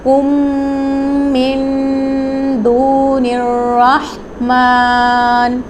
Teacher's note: کم کے اندر میم ساکن کے بعد ایک میم مشدد آ گیا ہے تو یہاں پہ بھی غنہ ہوگا۔